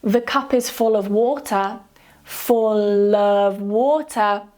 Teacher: because the next word starts with a vowel sound so we change it to a 'Light L' to make it easier to transition to the next word. 'Full of', 'full of water'.